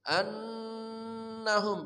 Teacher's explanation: Annahum nun musyaddah tajibul gunnah. Nun bertasyid wajib dibaca dengung.